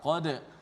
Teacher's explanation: Kemudian dal yang mati itu qalqalah, dibaca dengan nipis.